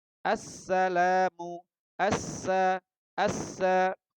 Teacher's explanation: Nah, inilah cara baca al pada hukum idgham syamsiyah. Alnya tidak terbaca. Langsung masuk idghamkan ke huruf setelahnya.